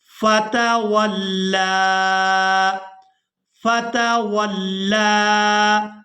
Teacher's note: لام کو کھڑی زبر کی وجہ سے کھینچ کر ادا کریں گے